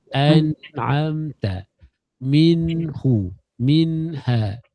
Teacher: Menjelaskan bunyi nun yang sukun. Cara kerja dia, angkat lidah kita, sentuh kat lelangit. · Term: izhar